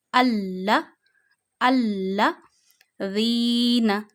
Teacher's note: لام پہ ذرا سا زور ڈالیں گے اور ذرا سا رک کے پڑھیں گے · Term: تشدید